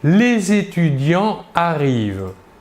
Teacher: Nous ne faisons donc pas la liaison entre le S, dernière lettre du mot étudiant, et le verbe arrive, qui commence pourtant par une voyelle, le A. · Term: liaison est interdite